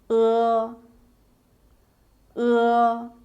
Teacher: tongue position is mid-high and slightly to the back